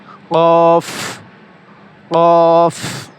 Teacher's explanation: জিহ্বার গোড়া তার বরাবর উপরে তালুর সঙ্গে লাগাইয়া উচ্চারিত হয় কফ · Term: 4 নম্বর মাখরাজ